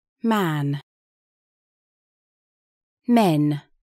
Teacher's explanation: губной звонкий согласный похож на русский но более энергичный чтобы его произнести надо с усилием сжать губы энергично сжимайте губы